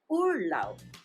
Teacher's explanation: the B at the end of the word is pronounced as P.